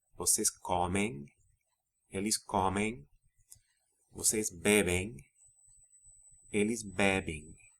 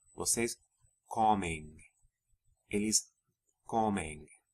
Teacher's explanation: And as with AR verbs, the pronunciation of the final syllable of the forms ending in em is nasalized